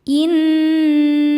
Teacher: Inna nun tasdid hukumnya ghunah musyaddadah karena nunnya bertasydid. Cara membacanya didengungkan bunyi n tahan sampai ada suara masuk hidung kurang lebih dua harakat.